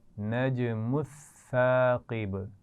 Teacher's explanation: سا کے اوپر تشدید ہے، لیکن یہ خیال رکھنا ہے کہ سا کی آواز میں سیٹی نہیں ہوتی